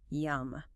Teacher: Notice how your mouth naturally closes at the very end of the word on the M sound. It's almost like you are literally tasting the food and trying to keep the delicious flavor inside your mouth.